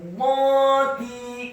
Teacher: Huruf ra yang sukun dibaca tafkhim tebal karena sebelum huruf ra adalah huruf yang harokatnya fathah, yakni huruf mim.